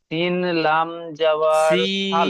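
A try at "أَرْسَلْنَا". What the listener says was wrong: সিন, সিনের সিনের টানটি ছেড়ে যাচ্ছে, সিন লাম জাবার সাল। না, আলিফের ডান দিকে জাবার আলিফ মাদ্দা হচ্ছে, জি খেয়াল করুন।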